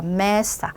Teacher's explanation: 끝에서 두 번째 있는 바울을 강하게 스트레스를 준다